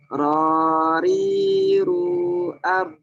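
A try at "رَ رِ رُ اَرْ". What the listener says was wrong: Tebalkan R. Rariru R.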